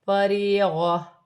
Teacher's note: یہاں چھوٹی سی جیم ہے، یہاں وقف ہوگی، دو زبر کی تنوین وقف کی صورت میں گر جائے گی اور تا ہا میں بدل جائے گی